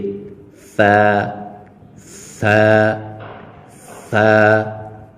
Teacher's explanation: زبان کا سب سے اگلا حصہ یعنی جو زبان کی سب سے آگے جو چونچ ہوتی ہے اس کا اوپر والے سامنے جو 2 دانت ہیں ان کے سب سے نیچے لگا کر ادا ہوگا